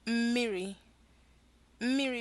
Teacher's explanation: notice that humming at the beginning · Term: syllabic nasals